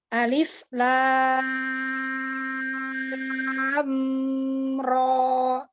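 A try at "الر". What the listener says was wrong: Oke, kesalahannya ini. Umu bahas alif jeda. Alif lam. Jadi suaranya jangan putus. Alif lam. Jadi udara terus langsung ke lam. Alif, lam, paham ya? Jadi bukan alif, jeda, lam, salah.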